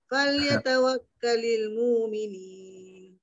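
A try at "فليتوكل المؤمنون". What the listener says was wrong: Kenapa bertukar jadi mu'minin? Mu'minin ke mu'minin ke mu'minun?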